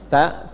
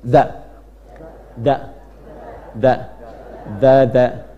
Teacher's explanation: kalau ta itu ada udara keluarnya. Ta lebih banyak. Kalau dha ada sedikit tertahan.